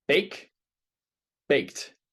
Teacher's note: no vibration so I'm saying T.